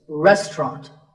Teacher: The second syllable is just ta, and the third is ront, so restaurant. In British English, you might hear just 2 syllables